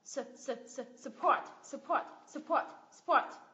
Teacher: Và âm thứ nhất không được nhấn là schwa sound.